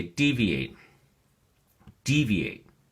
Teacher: deviate has three syllables and the emphasis or stress is on the first syllable